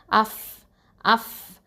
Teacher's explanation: ஃபங்கிறது வந்து உதட எழுத்து ஷஃபத்தான். அஃப் அஃப் இதை ஹம்ஸ் பண்ணணும், அதாவது காற்று வெளியேறும்.